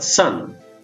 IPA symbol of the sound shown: s